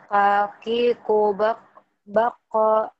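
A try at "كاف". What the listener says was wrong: Kaf bukan kof. Kaf bukan kof. Ulangi. Kaf ya, bukan kof ya.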